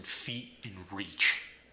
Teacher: with vowel substitutions the e sound as in feet and reach you're going to put an uh in front of the e sound